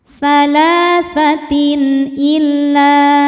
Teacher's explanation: Karena ada tanwin kasrah menghadapi huruf halqi yaitu hamzah ya huruf tenggorokan. Maka tanwin dibaca dengan jelas. · Salatin illa lam thobi'i zohiri. Karena ada alif didahului fathah maka lamnya panjang dua harakat. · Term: izhar halqi, idhar halqi, mad thobi'i zohiri